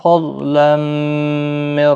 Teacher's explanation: تنوین کے بعد یرملون کا میم ادغام مع الغنہ ہوگا